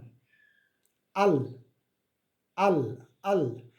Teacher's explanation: জিহ্বার কিনারা দন্তমারি উপরের তালু দ্বারা এটা উচ্চারিত হবে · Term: লাম